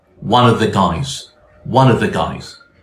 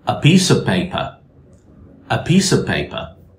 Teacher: the consonant sound V is omitted in the preposition of when it's followed by a consonant.